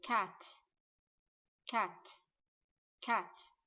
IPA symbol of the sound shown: ae